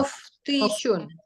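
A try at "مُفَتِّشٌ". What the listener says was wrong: Ada tasdidnya. Mufattishun. Mufattishun.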